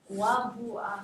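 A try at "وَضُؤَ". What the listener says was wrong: See the stupid Hamza on the wa? But it's a. You see you see it on the wa, but it's Hamza. It's wadu'a. So I don't care what is written on.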